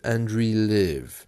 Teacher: the r is very soft there you can you can hear it